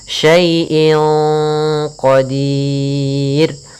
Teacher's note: Cara membacanya samarkan kepada qaf, dan qaf termasuk huruf tebal, maka ikhfa-nya agak ditebalkan